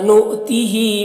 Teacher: حمزہ ساکنہ کو جھٹکا لگا کر پڑھتے ہیں۔ نؤتہ ہا میں کھڑا زیر ہے، ایک الف کے برابر کھینچ کر پڑھیں گے۔